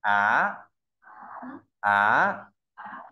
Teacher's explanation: có độ cao là 35 mình sẽ đọc từ trung bình cao nhất đọc từ dưới lên trên